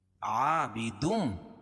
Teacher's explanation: عابدم تنوین کے بعد میم، تنوین کے بعد ادغام مع الغنہ کے 4 حرفوں میں سے میم ہے تو یہاں غنہ کر کے پڑھیں گے